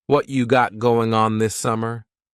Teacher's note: What cha is what plus you. You becomes cha.